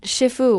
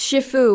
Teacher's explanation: Not shifu with a falling tone. It's shifu with a neutral tone.